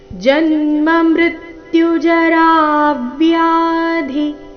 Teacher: ಜ ಮೇಲೆ ಆಘಾತ ಮೃತ್ಯು ಮೃಲೆ ಆಘಾತ ಜರಾವ್ಯಾಧಿ ರದೀರ್ಘ ಹೇಳಿ ನಂತರ ಘಾತ ಚರಣದ ಕೊನೆಗೆ ಧಿ ಮಹಾಪ್ರಾಣ ರಸ್ವ